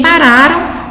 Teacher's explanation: Então, em bem, percebe-se que o M tem som de I, gera o som de I, então esse grupo E com o M aqui constitui um ditongo decrescente nasal, e em pararam, o M tem som de U, então aqui constitui um ditongo também decrescente nasal